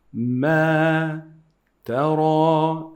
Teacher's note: We call it مد طبيعي. مد طبيعي is just two حركات.